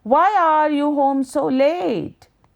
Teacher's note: Practice the question aloud with a tone of curiosity. Perhaps you'd use a light falling intonation at the end of your sentence.